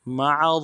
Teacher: आइन को रा के साथ मिलाना है, रा को मोटा करेंगे, रा के ऊपर तशदीद ज़ोर देंगे